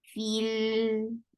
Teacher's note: So, but we will give this E sound anyways. So you will hear the sound of E, but that will not be long.